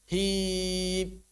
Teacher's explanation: Memotong suara mim sukun menghilangkan suara ghunahnya